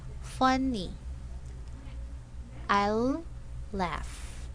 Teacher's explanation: You may notice that the intonation jumps up and falls a little.